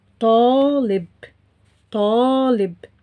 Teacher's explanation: كسرة under لام. ألف here is a long vowel sound like the sound A in English. So we don't write any symbols above or under it.